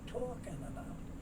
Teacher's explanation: The L is not sounded, so you get talking. Very often the G is not sounded, and the N moves over to the A, so you get talking about.